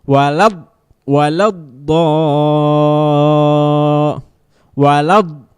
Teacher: Nah, ditekan do-nya, ingat di pinggir lidah, ditempelkan ke geraham. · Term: huruf do